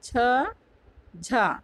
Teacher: तालु वर्ग का दूसरा और चौथा यानी छ, झ ये महाप्राण हो जाएगा।